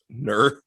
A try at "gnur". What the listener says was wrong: Gnur. But you swallow the G when you pronounce it. Gnur.